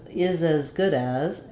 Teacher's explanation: I think the as is slightly more reduced and it's going to be a little more open, which is why I think of it as an vowel, and I wrote it with an E here for you.